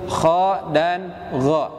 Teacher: Apabila pemirsa melafalkan huruf kha dan gha, dapat dirasakan apabila tenggorokan atas bergetar, maka insyaallah Bapak dan Ibu pemirsa yang dirahmati Allah sudah benar dalam melafalkan huruf kha dan gha.